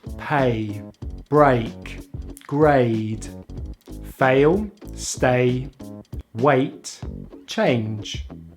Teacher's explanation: we glide into the short vowel /i/ by closing the jaw slightly, relaxing the lips and keeping the tongue in the front of the mouth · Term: A diphthong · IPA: /eɪ/